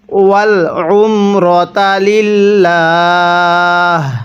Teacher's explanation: এখানে লিল্লাহ পড়া যাবে না, কারণ আল্লাহ শব্দের লামের পূর্বে যখন এরকম জের থাকবে তখন লামটাকে আমাদের চিকন করে পড়তে হবে